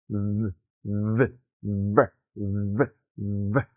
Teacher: recuerda activar tus cuerdas vocales, ya que este es un sonido vibrante de principio a fin